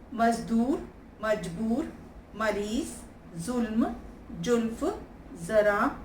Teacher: निश्चित रूप से हिंदी फ और ज में स्फोट अधिक है, घर्षण कम है। अंग्रेजी तथा उर्दू फ ज में कोमलता और घर्षण अधिक है।